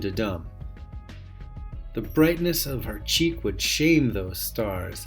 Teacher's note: the simplest of all unstressed stressed unstressed stressed over and over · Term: iambic